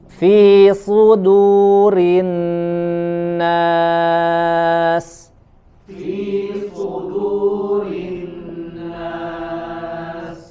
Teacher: sodnya dibaca dengan menebal suaranya dan dimanyunkan karena dia berharokat dhamma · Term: huruf sod